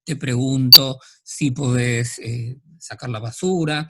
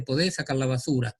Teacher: ese tono ascendente propio de la pregunta